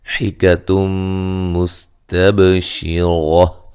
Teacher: سین کو باریک سیٹی سے